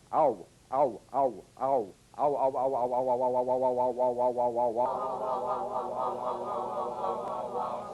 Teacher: Another dip thong. A combination of the largest lip opening number five. Ah, with the smallest number one. Ooh. Again using that quick American glide. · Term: diphthong